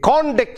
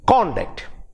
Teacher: that word conduct is conduct is stressed on the first syllable